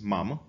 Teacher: the vowel A in the word mám, which means I have in Czech, can be pronounced very shortly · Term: vowel quantity